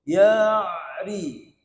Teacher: Huruf ain tu pun bukan kat hidung, pada pertengahan kerongkong.